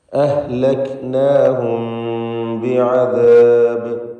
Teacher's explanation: ശേഷം ബ വന്നതുകൊണ്ട് ഇഖ്ഫ ഷഫവി നൽകി, അഥവാ മീമിനെ അവ്യക്തമാക്കി മണിച്ചുകൊണ്ട് ഉച്ചരിക്കേണ്ടതാണ്.